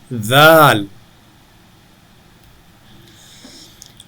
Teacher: ذال کا نام بھی سا کی طرح نرمی سے پڑھنا ہے، زبان کی نوک اوپر والے دانتوں سے لگا کر